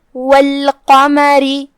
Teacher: را کے نیچے زیر ہے، لہذا اسے پتلی آواز میں ہم پڑھیں گے کیونکہ یہاں حکم ہے ترقیق.